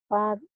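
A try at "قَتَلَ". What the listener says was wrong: Kok. Kok. Kok. Kok. Kok. Kok. Kok. Kalau titiknya satu baru fa, titiknya dua jadi koko, baju koko, ko. Kalau titiknya satu fa.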